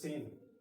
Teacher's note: اور اس سے ملتا جلتا حرف ہے سین، اس میں سیٹی کی طرح آواز نکلتی ہے